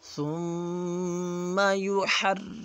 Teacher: ثم میم مشدد ہے، میم پر ہم غنہ کریں گے، ایک الف کے برابر غنہ کیا جائے گا